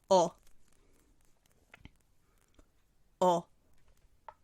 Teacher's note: O is a rounded vowel so while pronouncing it you'll have to round your lips